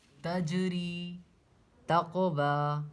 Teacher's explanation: تو تجری تقوی، قاف حروف قلقلہ میں سے، جیم بھی حروف قلقلہ میں سے، اسی لیے اس پہ مخرج ٹکر کھا کر الگ ہو رہے ہیں